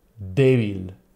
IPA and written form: ˈdeβ̞il (debil)